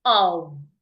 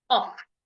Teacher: When you have the word of, the F there sounds like a V, of. But when you have the word OFF, the two F's sounds like an F, off. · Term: V sound